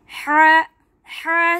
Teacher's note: हा निकलेगा दरमियाने हलक से